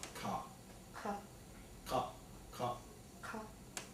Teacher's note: Yeah, so you're using a uvular. So that's a Q.